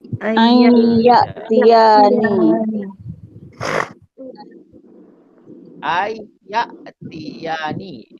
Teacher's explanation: Nun mati bertemu dengan ya, jadi kita masuk. Bila masuk, an jadi ai. Bila dah masuk, kena dengung. Bukan hanya masuk, tetapi dengung. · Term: idgham bi hunna